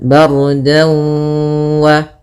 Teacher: Kemudian dau ada fathatain bertemu dengan waw, maka apabila ada fathatain bertemu dengan waw hukumnya idgham bi gunnah atau ma'al gunnah, yaitu kita masukkan dannya ke waw, kemudian kita tahan dulu gunnahnya 2 harakat